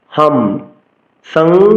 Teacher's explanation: অনুসার উচ্চারণ ম হসন্ত করতে হবে অর্থাৎ ম এর অর্ধেক উচ্চারণ করতে হবে